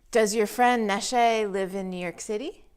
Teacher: because it's a yes/no question the intonation of the question goes up at the end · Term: rising intonation